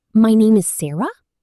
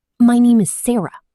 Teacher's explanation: saying my name is Sarah with a rising tone sounds unsure, but my name is Sarah with a falling tone sounds confident